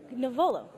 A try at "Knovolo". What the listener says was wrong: The K is silent. Knovolo.